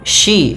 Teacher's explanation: tapi dia huruf shin, yaitu dari tengah lidah kita.